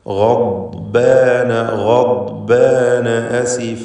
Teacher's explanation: ളാദ് നാവിൻ്റെ അരുവിൽ നിന്ന്, സൈഡിൽ നിന്ന്, അരു നീളത്തിൽ എന്നാണ് പറയുക. അങ്ങനെയുള്ള ആ നീളത്തിലുള്ള മഖ്റജിൽ നിന്ന് തന്നെ ഉച്ചരിക്കണം.